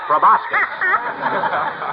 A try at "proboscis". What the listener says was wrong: It's proboscis, my boy. The C is silent, like a husband in a millinery shop.